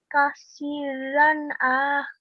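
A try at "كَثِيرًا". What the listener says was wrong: No, we do not pronounce the alif. It just, we do not pronounce it because there's no stroke on top. Kathiran.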